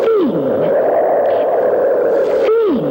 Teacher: you can hardly hear the th sound that starts the word thing it's like a thin breath of air